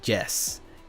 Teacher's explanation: people that speak Spanish are so used to the the Y sounding like hard J that whenever they speak English they say Jess